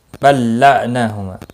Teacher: لام ساکن نہیں پڑھا جائے گا، اگلا لام مشدد ہے اس لیے